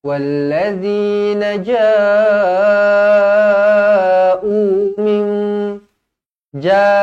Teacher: mad wajib muttasil empat atau lima harakat